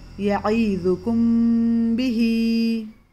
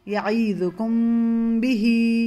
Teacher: अगर मीम साकिन के बाद हुरूफ बा आए तो गुन्ने के साथ इख्फ़ा होगा और दोनों होठों को मिलाते हुए हम बा पढ़ेंगे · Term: इख्फ़ाए शफवी